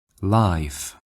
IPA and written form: laɪf (life)